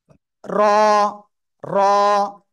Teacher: জিহ্বার আগা তার বরাবর উপরে তালুর সাথে লাগিয়ে মোটা আওয়াজে একালিপ টেনে উচ্চারণ করতে হবে,